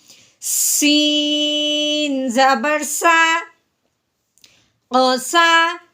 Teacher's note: سین کو سیٹی والی آواز نکالتے ہوئے ہم نے اس کے اوپر زبر پڑھنی ہے